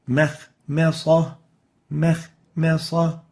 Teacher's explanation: So make sure to give the meme the attenuation characteristic, the tarqiq, that should be given to this letter.